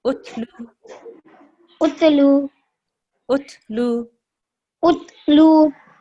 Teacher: Now you don't make a jerk on the ta. You have to be soft.